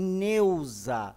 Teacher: o E é uma vogal. E o U é uma semivogal. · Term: ditongo